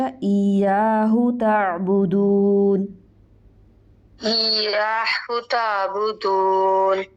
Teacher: ایاہو اس کو لمبا نہیں کریں گے ہا کو، کیونکہ آگے واو نہیں ہے. ہا کے اوپر صرف ایک پیشہ، ایاہ تعبدون.